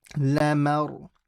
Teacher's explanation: Ma is empty, ra is heavy.